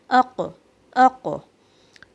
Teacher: اس کے بعد پھر قاف اور کاف کی صفات میں بہت فرق ہے. قاف میں تفخیم ہے because of استعلا, back of the tongue raise ہوئی, ساؤنڈ کا ڈائریکشن چینج ہوا, یہاں پہ تھوڑا سا ساؤنڈ کیری ہوا زبان میں, اق, اق.